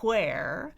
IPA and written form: ʰwɛər (where)